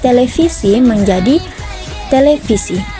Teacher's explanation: bunyi V dalam bahasa Belanda dirubah menjadi Bunyi F dalam bahasa Indonesia